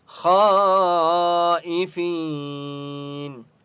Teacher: خا کو 4 سے 5 الف کی مقدار کھینچ کر پڑھیں گے اور خا مستعلیہ میں سے اس لیے خا کو موٹا پڑھیں · 4 سے 5 الف کی مقدار کھینچ کر پڑھیں گے اور خا مستعلیہ میں سے اس لیے خا کو موٹا پڑھیں گے ای فی یا مد ہے فا کو ایک الف کی مقدار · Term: بڑی مد